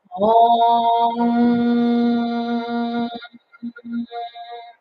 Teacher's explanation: When we chant, the tip of the tongue comes to the roof of the mouth. It creates a little block in the back of the throat by raising the tongue up, so that it vibrates in our head and into our throat to activate the higher brain centers.